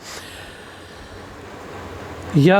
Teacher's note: या को हम लोग तालू से बोलते हैं